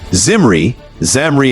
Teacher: it starts with a voiced Z, a toothy sound, followed by M, nasal, lippy, and R, a soft rolling trill. Its vibe follows a CVCCV pattern, consonant, vowel, consonant, vowel.